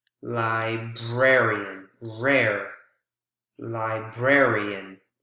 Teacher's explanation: instead of library the first syllable it's the second syllable you can see that's the strongest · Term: word stress